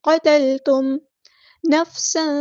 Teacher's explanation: سین کی سٹی ہم نے واضح کرنی ہے، تنوین کی آواز کو یہاں چھپا دینا کیونکہ یہاں پہ اخفا ہو رہا ہے.